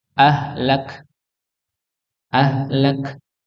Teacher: kaf di sini tidak dipantulkan sebagaimana qaf, ya, tapi dia apa namanya, dialirkan sedikit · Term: hamz